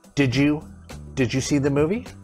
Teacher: we changed that to a j sound